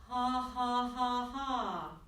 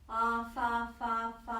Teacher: Right, unvoiced fricatives. Your chords are going to stop vibrating when you've got an H or an F or an S.